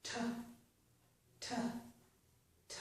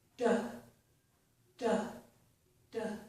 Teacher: the difference, of course, is that t is voiceless. There's no vocal cord vibration. D is voiced